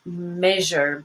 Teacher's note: a sound that's similar to SH, but you use your vocal cords. It's voiced. And it's spelled S between vowels.